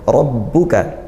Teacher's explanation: huruf fathah dibaca tafkhim tebal ya, pangkal lidah dinaikkan